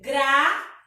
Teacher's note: O tônico aí é o U e não o I